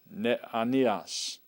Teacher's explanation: there are two vowels together but those two vowels don't form a diphthong they're separated